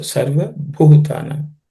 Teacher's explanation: In this word, bhu is an aspirated consonant, the fourth letter in the per class of consonants, bha.